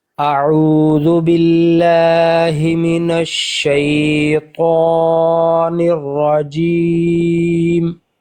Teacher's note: जी को हम लंबा इसलिए कर रहे हैं क्योंकि आगे या साकिन है